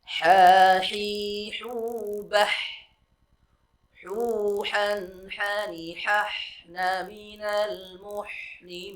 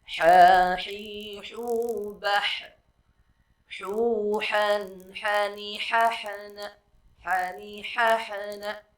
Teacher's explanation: Huruf H ini pun adalah memiliki sifat rakhawah, yang mengalir, jangan ditahan, dan jangan pula memantul.